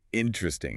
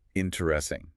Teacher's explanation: We almost always drop that first unstressed e sound. We say interesting, not the full four syllable.